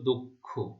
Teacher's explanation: দ এর সাথে যে অ রয়েছে তার উচ্চারণ ও এর মতো হবে